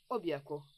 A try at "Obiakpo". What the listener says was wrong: Au fait, ta façon de dire Obiakpo, tu sais, j'aimerais que tu utilises une voix un peu plus romantique pour prononcer ce Obiakpo. Pas Obiakpo comme si on allait à la guerre. Obiakpo.